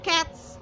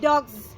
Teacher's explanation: The example from voiceless is cats with s, and the example from voice sound is dogs with z.